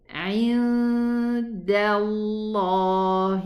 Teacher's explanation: The dal has a fatha, so the lam in the name of Allah is going to be pronounced elevated.